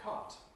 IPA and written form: kɑˑt (cart)